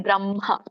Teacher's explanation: ಪದ ಸಂಯುತ ಹಕಾರ ಆಗಿರೋದ್ರಿಂದ ಒಂದು ವ್ಯಂಜನಕ್ಕೆ ಇನ್ನೊಂದು ವ್ಯಂಜನ ಕೂಡಿರೋದ್ರಿಂದ ಇಲ್ಲಿ ಏನಾಗುತ್ತೆ ಅದು ಉರಸ್ಯದಿಂದ ಬರಬೇಕು ಗಂಟಲಿನಿಂದ ಬರಬಾರದು